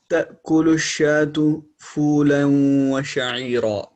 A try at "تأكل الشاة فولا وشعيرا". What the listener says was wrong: Okay, no extra غنة. تأكل إدغام but without extra غنة.